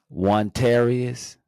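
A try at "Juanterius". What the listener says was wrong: It's Juan Terrius. Juan Terrius. So it's JUANTERIOUS. I feel like you're giving it a TAR.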